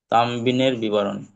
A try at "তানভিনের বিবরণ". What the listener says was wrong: তানবিন নয়, তানভিনের বিবরণ। তানভিনের, তাই তো? তানবিন কাকে বলে শোনেন। জজমওয়ালা নুনকে নুন সাকিন বলে। মানে সাকিন, নুনের উপরে সাকিন থাকলে, নুনের উপরে সাকিন থাকলে সেই নুনকে নুন সাকিন বলে।